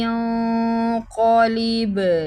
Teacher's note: نون اخفا کریں گے، با پہ قلقلہ کریں گے